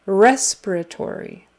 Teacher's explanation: it's on the first syllable and then the fourth but the strongest is on the first syllable